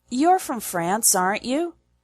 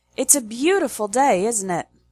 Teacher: But when you are making an observation and you are pretty confident that the other person will agree, we change the intonation pattern from high, low, high to low, high, low.